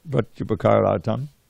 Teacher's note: the short A at the end of upakara merged with the short A at the beginning of the next word artam to become a long A. This is called sandhi.